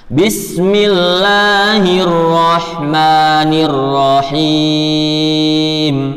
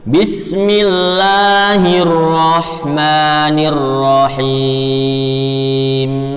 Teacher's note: mim pada kalimat ar-Rahman dibaca dua ketukan lagi, jangan sampai tiga ketukan, ya. Dan ketika tiga ketukan ini juga disebut lahnu al-khafi, kesalahan yang ringan.